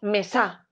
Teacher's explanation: mesa o decimos mesa decimos mesa verdad la más fuerte se golpe de voz recae en la sílaba me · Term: sílaba tónica